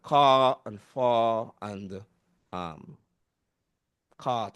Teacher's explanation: So for example that issue of the R for example when we consider the now in in England currently they they are what they call non-rotic they don't pronounce those Rs after vowels